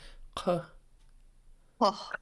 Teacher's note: This first sound is underlined K, so back your throat, and then a short U.